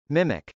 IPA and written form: mˈɪmɪk (mimic)